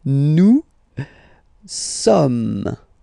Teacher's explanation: you don't pronounce the final S here, it doesn't exist